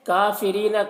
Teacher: کافرین، کاف کو باریک پڑھیں گے، را کے نیچے زیر ہے، را کو بھی باریک پڑھیں گے۔ یہاں پر یا مدہ ہے، یا مدہ کو ایک الف کے برابر کھینچ کر پڑھیں گے۔